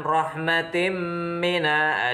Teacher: ada tanwin bertemu mim itu adalah hukum bacaannya Idgham Bighunnah cara membacanya masuk dengan dengung dua harokat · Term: idgham fi gunnah